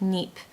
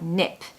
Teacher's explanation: make sure you pronounce nip really fast because if you spend too long on that word it will sound like NEP